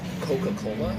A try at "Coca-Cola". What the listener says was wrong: I think you're pronouncing it wrong. I think you don't pronounce the second C. It's like silent. Coca-Cola.